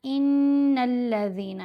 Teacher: غنہ مطلب آواز کو ناک میں پڑا جائے گا۔ غنہ کرتے ہوئے ہم نے آواز کو ناک میں پڑھنا ہے اور 2 حرکات کی مقدار آواز کو لمبا بھی کیا جائے گا۔ پھر یہاں دال ساکن ہے، اس کے اوپر ہم نے قلقلہ کرنا ہے۔